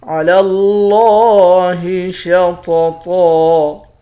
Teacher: علی اللہ شططا، لام کو لفظ اللہ کے لام کے ساتھ ملا کر موٹا پڑھیں گے۔ لفظ اللہ کے لام کے اوپر کھڑا زبر ہے، ایک الف کے مقدار کھینچیں گے